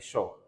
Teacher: इसके उच्चारण स्थल होता है मूर्धन्य यानी कि जीभ दांत के पीछे वाले मसूड़े से टकराती है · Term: उष्म व्यंजन